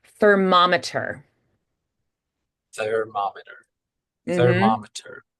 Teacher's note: the M's you're changing the resonance space in the air flow when you have the M the air has to change direction and go through the sinuses for the M's